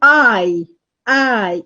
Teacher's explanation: It's not a simple vowel, no, because you start at having a and finishes at e. It starts at a and finishes at e, giving you I, which is in reality, it's not a monophthong, but it is rather a diphthong.